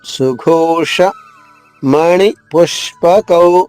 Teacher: మహాప్రాణి ఘ ఓత్వంతో అంటే దీర్ఘమైన ఓకారంతో